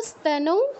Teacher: ইস্তানৌ নয়, ইয়ের পর যেটা বলেছেন সেটা স্তানৌ, ই আগে বলবো না, ঠিক আছে? বলুন তো স্তানৌ।